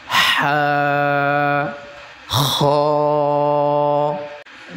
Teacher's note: গলার মাঝখান থেকে চেপে উচ্চারণ করতে হবে